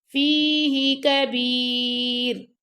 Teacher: اب یہاں پہ دیکھیں را باریک پڑھا جا رہا ہے، ٹھیک ہے، کیونکہ یہاں را سے پہلے یا ساکن ہے اور یا ساکن سے پہلے با زیر ہے · اب فی تو لمبا ہو گیا لیکن ہی کو لمبا نہیں کرنا. یہ اکثر پڑھا جاتا ہے جی، جیسے آپ لوگ سنا ہوگا کبھی، تو فیہ کبیر، فیہ یہ غلط ہے، ٹھیک ہے، ہی کو لمبا نہیں کرنا آپ نے.